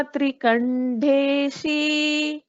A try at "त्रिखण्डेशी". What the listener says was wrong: Trikhandeshi. This kha, it is kha. Mahaprana.